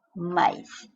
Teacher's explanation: Você tem a vogal a semivogal I, o que te dá um ditongo decrescente e é oral, porque não tem nem o tio para nasalizar, nem terminando em M ou N, o que garantiria a nasalização.